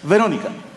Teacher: la V se pronuncia con una ligerísima F, como que rozan tus dientes con el labio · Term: B labiodental